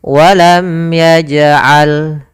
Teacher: Walam ya, walam yaj'al, ada huruf jim yang berharokat sukun dan ditandai di sini warna ungu, itu hukum bacaannya qalqalah, yaitu suara jimnya dipantulkan, tidak walam yaj'al tapi dia ada pantulannya, walam yaj'al.